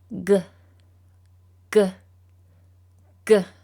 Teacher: Today we're going to learn about the hard G sound. To make the hard G sound, your mouth will be open with the back of your tongue touching the roof of your mouth. Then you let out a puff of air, like this.